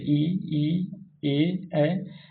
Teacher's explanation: अग्र स्वर यानी वैसे स्वर जो कि मुंह के अगले भाग से या जीभ के अगले भाग से बोला जाता है।